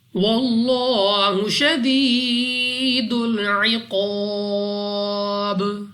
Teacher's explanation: لام آف اللہ سے پہلے حرف پر زبر ہے، تو اس لام آف اللہ کو یعنی اللہ کے اس لام کو ہم نے موٹا پڑھنا ہے